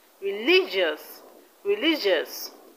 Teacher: Now religious, the stress is on li.